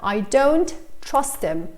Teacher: I didn't pronounce the H at all